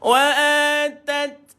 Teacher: Mati T dulu baru keluar angin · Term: tasukun